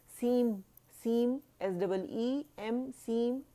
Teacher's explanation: नून जो है वो मीम के अंदर चला गया तो उसका कंप्लीट इदगाम हो गया उसके अंदर, ठीक है, तो इसलिए मीम बोला जाएगा।